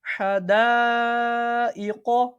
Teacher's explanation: مد متصل کو کتنا کھینچ کے پڑھیں گے؟ 2 2.5 الف کی مقدار کے برابر